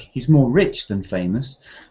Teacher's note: intonation plays a part, because I would say rich to emphasize something